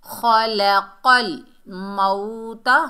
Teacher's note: खलक़ल मौता, वाव सेकंड्स पहले ज़बर, ये वाव लीन है, नरमी और जल्दी से अदा करेंगे। मऊ, ता के ऊपर ज़बर बगैर खींचे पढ़ेंगे ता।